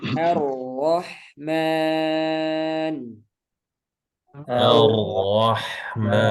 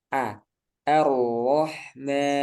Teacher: perlu hati-hati a-nya karena dia a tipis tetap dibaca a tipis kemudian ro tebal